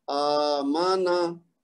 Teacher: मीम और नून को लंबा नहीं होने देना लेकिन हमजा को लंबा करना है, क्योंकि उसके ऊपर खड़ा जबर है जो कि कायम मुकाम है अलिफ मद के।